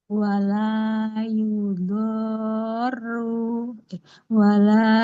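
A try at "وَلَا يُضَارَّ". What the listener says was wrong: eh, huruf dotnya 6 harokat, ya-nya nggak panjang.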